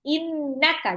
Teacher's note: Baca nun tasjid harus digunah innaka. Jadi bukan innaka tapi innaka.